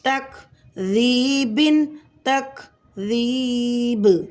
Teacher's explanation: با میں قلقلہ کبریٰ ہوگا حالت وقف میں